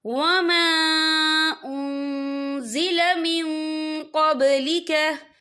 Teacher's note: और आगे देखें मिन क़ब्लिका, मिन, यहाँ नून साकिन है, नून साकिन के बाद जो है कौफ आ रहा है, और कौफ जो है इक्फा का वर्ड है, तो हम यहाँ इक्फा करेंगे, नून साकिन की आवाज को नाक में छुपाएंगे।